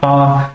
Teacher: क्योंकि आप उच्चारण करके देखिए आ का, जैसे मैंने बोला आ, तो मेरा जो मुंह है वो पूरा खुल गया है, तो इसलिए इसको क्या कहते हैं, हम विवृत कहते हैं।